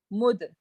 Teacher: So there will be a qalqala here. So there will be a jerk on the dal.